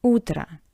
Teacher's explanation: In the first word, u is stressed, o is unstressed, that's why o sounds like a soft a